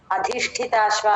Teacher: ధి ష కింద ఒత్తు ఠ మూడు ఒకటి తర్వాత ఒకటి మహాప్రాణాలు